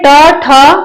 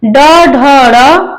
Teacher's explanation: ट वर्ग में ट ठ अघोष के अंतर्गत आएगा ड ढ ड सघोष के अंतर्गत आएगा